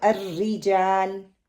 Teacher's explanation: زیر ہوگی تو الرجال, لائٹ پڑھا جائے گا